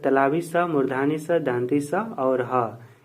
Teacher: जिसका उच्चारण एक प्रकार की रगड़ से उत्पन्न होता है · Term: उष्म व्यंजन